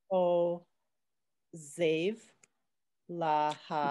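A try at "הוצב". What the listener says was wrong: Give it more of a TZ. Save. Ho, save.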